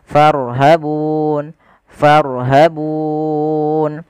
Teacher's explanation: Sukūn yang muncul karena waqaf (tanda baca) di mana terdapat huruf mad di depannya. Kita bisa memanjangkannya menjadi dua harakat dalam kata bun. Kita bisa menggunakan empat harakat dan juga enam harakat. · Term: mad arid lissukan